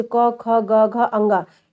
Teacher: कंठ का स्पर्श करते हैं, यानी कंठ के द्वारा ही आवाज निकलती